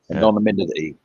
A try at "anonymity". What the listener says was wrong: Oh, emphasize the T.